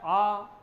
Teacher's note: अब जैसे ही हम आ का उच्चारण करते हैं हमारा मुंह पूरा खुल जाता है। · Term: विवृत स्वर